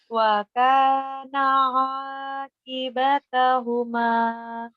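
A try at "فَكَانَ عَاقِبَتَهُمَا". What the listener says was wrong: Wa kana faka bukan wa ya. Fakana ya. Fakana akibatahuma.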